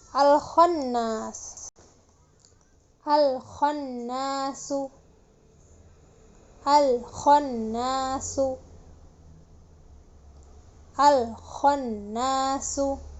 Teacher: Ketika alif lam bertemu dengan huruf kha, lam sukun dibaca jelas ya.